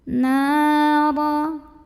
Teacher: Karena ada alif yang didahului baris fathah, maka cara bacanya dipanjangkan nunnya 2 harokat. Nara. Huruf ra dibunyikan secara tafkhim karena ra-nya ini berbaris di atas barisnya fathah. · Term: mad tabi'i